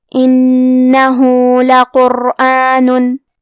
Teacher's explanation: کلمت لقرآن میں لام پہ زبر ہے تو ہم زبر کو ظاہر کریں گے اور حرف القاف کو موٹی آواز میں پڑھیں گے · کلمت انہو میں حرف النون کی تشدید کو ظاہر کرنا ہے. ہاں پہ الٹا پیش ہے تو مد صلہ صغرا کو 2 مد کے برابر ادا کریں گے